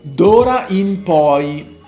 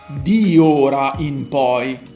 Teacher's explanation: But the final E of di, it is elided.